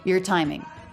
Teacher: Now here we have a stressed syllable. It begins with a T. That is a true T. A lot of our T's in English change to other sounds, but this is a true T.